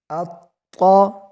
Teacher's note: حمزہ طا زبر اط، طا زبر طا اط طا. خوب جماؤ کے ساتھ کیونکہ یہ طا حروف قلقلہ میں سے ہے